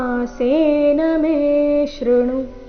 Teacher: ತತ್ಸಮಾಸೇನ ಮೇ ದೀರ್ಘ ಮುಂದೆ ಶ್ರುಣು ಎರಡು ಅಕ್ಷರಗಳು ರಸ್ವ